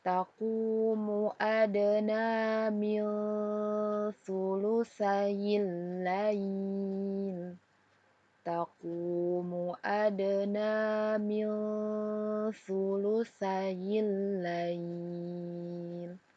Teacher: Ada nun sukun bertemu dengan huruf sa, maka kita baca samar disertai dengan dengung. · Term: ikhfa hakiki